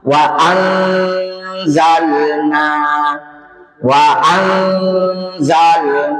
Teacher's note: Wa anzalna wa anzalna ini ada an nun sukun ketemu za sama tadi tanwin atau nun sukun ketemu syin. Maka bunyinya itu ikhfa. Ikhfa artinya samar-samar dan lama. · Jadi kita tidak bilang lagi wa'an. Jadi bunyi n-nya samar-samar dia, bukan lagi wa'an. Dan dia lama.